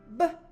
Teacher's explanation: I like to call it the bubble sound because the lips hold the sound in like a bubble, and then it pops out with your voice. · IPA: /b/